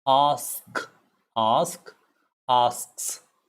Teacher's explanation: s k s will come together ask ask asks it becomes an x it is the sound of an x but asks